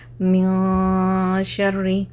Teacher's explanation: जैसे देखें, मिन शर्री, तो मैं नाक में छुपाना, इख्फा का मतलब क्या, नाक में आवाज़ को छुपाना।